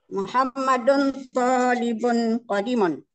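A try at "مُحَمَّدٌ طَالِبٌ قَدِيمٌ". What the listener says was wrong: Qadimun panjang.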